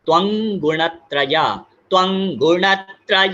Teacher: यहाँ पर त्वं और ग ये बन जाएगा ङ